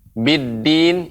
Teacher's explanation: pengucapan dal tidak dengan ujung lidah